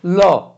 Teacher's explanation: जब हम इसका उच्चारण करते हैं तो हमारी जिह्वा बाएं से दाएं को जाती है और हवा बराबर से पास हो जाती है, ल, इस तरह से इसका उच्चारण होता है। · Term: पार्श्विक वर्ण